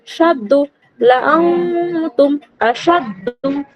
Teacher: দাল পেশ দু, দালের উপর তাসদিদ রয়েছে, তাসদিদ দালের অক্ষরকে দুবার পড়তে হয়, একবার আগের অক্ষর এর সঙ্গে পড়তে হবে, আর একবার নিচে আলাদাভাবে উচ্চারিত হবে